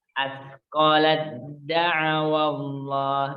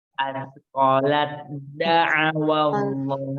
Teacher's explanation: Tidak boleh keluar udara dari huruf ta. Langsung masuk ke huruf to. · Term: idgham